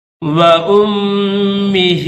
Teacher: می مشدد ہے تو غنہ کریں گے